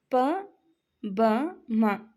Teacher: ಈ ಮೂರು ಅಕ್ಷರಗಳನ್ನ ನಾವು ಉಚ್ಚಾರ ಮಾಡುವಾಗ ನಾವು ತುಟಿಯ ಸಹಾಯದಿಂದ ಉಚ್ಚಾರಣೆ ಮಾಡ್ತೀವಿ ಹಾಗಾಗಿ ಈ ಅಕ್ಷರಗಳನ್ನ ಓಷ್ಠ್ಯ ಅಕ್ಷರಗಳು ಅಂತ ಕರೀತೀವಿ ಓಷ್ಠ್ಯ ಅಂತ ಅಂದ್ರೆ ತುಟಿ